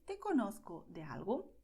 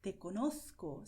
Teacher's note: And pay attention because I pronounce conozco with a lisp because I speak the Spanish that is spoken in Madrid and in Spain in general